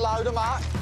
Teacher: Load them becomes load 'em. Hold them becomes hold 'em. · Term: Birmingham accent